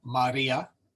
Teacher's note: we have a short a and a long I so Maria and the accent is in the middle one